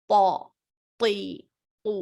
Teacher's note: सिर्फ पौ में सारी की सारी जुबान ऊपर की तरफ जाएगी. ऐसा लग रहा है गोया कि जुबान ऊपर चिपक जाएगी.